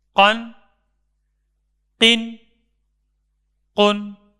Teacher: یاد رکھیں، تنوین کو پڑھتے وقت زبان اوپر والے دانتوں کے مسوڑوں سے لگی رہے، آواز کو روک دینا ہے اور تنوین کے آخر میں نون کی ہلکی اور صاف آواز آنی چاہیے